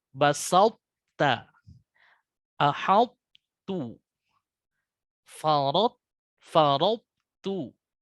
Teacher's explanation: Kemudian menurunkan pangkal lidah untuk menyebut huruf ta. Jadi langsung posisinya istifal yang dikeluarkan dengan sifat hams. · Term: idgham naqis